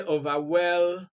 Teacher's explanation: stress is on ing, which actually is completely unnatural. You cannot say overwhelming.